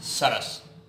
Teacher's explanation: सरस जब हम बोलते हैं तो आप अपनी जीभ की स्थिति देखिए, ऊपर वाले जबड़े में दांतों के पास पहुंचती है, तब हम इसे बोल पाते हैं सरस, इसलिए हम इसे दंत्य कहते हैं।